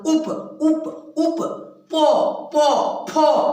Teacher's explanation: ठोर जो है एक दूसरे में सट जाते हैं। यदि हम इसको न सटाएंगे तो बोल नहीं पाएंगे।